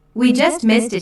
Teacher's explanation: notice the emphasis on just to show the very recent past